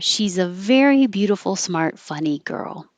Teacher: And you run out of air. So she's a is pushed together.